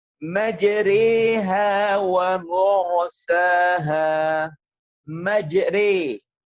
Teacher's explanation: harokat antara fathah dan kasrah, tapi kecenderungannya pada harokat kasrah lebih besar. Makanya disebut dengan imalah kubro.